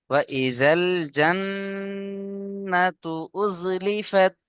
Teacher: وإذا الجنة أزلفت হ্যাঁ, ওয়া ইজাল জান্নাতু, এখানে নুন তাসদিদ অজীব গুন্না, একটু বেশি গুন্না করবেন।